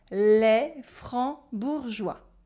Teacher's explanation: Remember, silent C, silent S, and we have a je sound instead of a g sound.